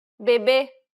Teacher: the circumflex accent requires you to stress the syllable and to use a closed pronunciation.